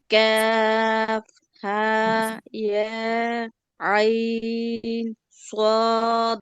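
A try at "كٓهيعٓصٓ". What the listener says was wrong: কেমন যেন ছাড়া ছাড়া হয়েছে সবগুলো, মনে হচ্ছে আলাদা আলাদা ওয়ার্ড। আর হয়েছে আইনের মধ্যে গুণনা হয় নাই। আহ এটা একটা শব্দ তো, মানে আহ একটা হরফ বলার পরে থামা যাবে না, মানে কতক্ষণ চুপ করে থাকলে মনে হয় যে আলাদা আলাদা। আর আই টান দেওয়ার পরে তো গুণনা হবে।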